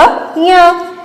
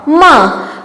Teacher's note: नासिकीय वर्ण मीन्स इनकी ध्वनि, जब हम इनका उच्चारण करते हैं तो इनकी ध्वनि नाक से निकलती है